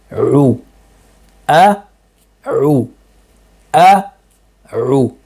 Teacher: Then we have our ain, U, which comes again from the wasatul halq, the middle of the throat. U. Notice that my lips are protruding out completely.